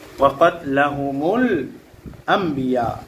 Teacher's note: নুন সাকিন অথবা তানবিনকে এই যে ছোট্ট মিম দেখতে পাচ্ছেন এই ছোট্ট মিম দ্বারা পরিবর্তন করিয়া গুন্নাহ করিয়া পড়িতে হয় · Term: ইকলাব